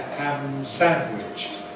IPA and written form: ˌhæm ˈsænwɪʤ (ham sandwich)